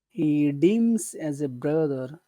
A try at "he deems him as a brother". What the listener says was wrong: don't forget him you have to say him him